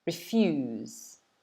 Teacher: Notice the stress is on the second syllable.